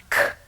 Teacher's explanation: If you go further back in the mouth and bring your tongue up behind the back of your throat, you can make the voiceless sound or the quiet sound k. Not ka, but k.